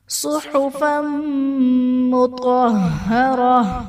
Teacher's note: صحفا مطہرہ، صاد حرف مصالیہ پر پڑھا جائے گا۔ فا پر دو زبر کی تنوین، تنوین کے بعد حروف یرملون میں سے میم ہے تو یہاں پر بھی ادغام مع الغنہ کا قاعدہ ہوگا۔ طا حرف مصالیہ پر پڑھا جائے گا، را پر زبر ہے تو را کو بھی پر پڑھا جائے گا۔